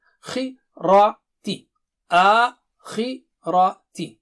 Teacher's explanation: Khi is thick and high because of kasra. That thickness and highness is decreased but still there.